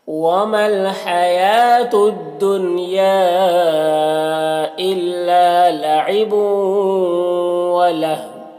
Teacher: واللہ یہاں پر وقف کریں گے تو واو کی دو پیش کی جو تنوین ہے وہ سکون سے بدل جائے گا